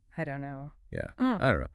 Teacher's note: The vowel in don't kind of fades, the T often vanishes before the K sound. It's just faster, smoother.